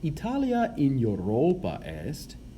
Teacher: notice that europa has a long a at the end because it's the object of the preposition